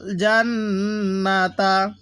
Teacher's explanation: এই নুনের মধ্যে গুনাহ করব, তবে টান দিব না